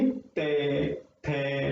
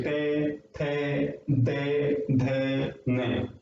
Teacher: दांतों के बीच में हमारी जीभ आती है